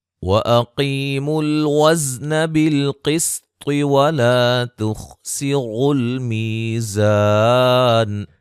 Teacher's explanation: قاف کو موٹا، طا کو موٹا، خا کو موٹا ادا کریں گے